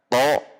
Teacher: tho tidak dengan membulatkan bibir makhrojnya sama dengan ta namun pangkal lidah tegang atau naik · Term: isti'la